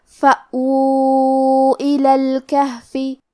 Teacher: کلمت الکہف میں یہاں ہا ساکن ہے تو ہمیں ہا کو جزم سے پڑھنا ہے، اور ہا کی ادائیگی حلق کے نیچے والے حصے سے ہے